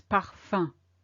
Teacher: There is no M that you can hear, because again it's the sum of the U and the M that make the sound un.